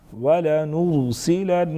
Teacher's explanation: ولنرسلن again نون مشدد غنہ کریں گے.